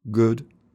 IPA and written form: gʊd (good)